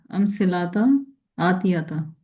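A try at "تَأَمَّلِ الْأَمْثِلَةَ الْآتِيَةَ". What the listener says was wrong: हाँ, मिलाना है ना। अल आ गया। अल आ जाए तो जरूर मिलाना होता है। अलिफ लाम आ जाए तो पिछले लफ्ज को आगे मिलाना होता है।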